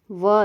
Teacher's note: व दंत प्लस ओष्ठ। दांत और होंठ दोनों का यूज हम करते हैं जब हम व को उच्चारित करते हैं। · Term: दंतोष्ठ्य